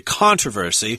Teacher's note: Americans we say controversy with the accent on the first syllable